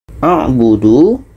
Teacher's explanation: du adalah wau yang panjang dan sunyi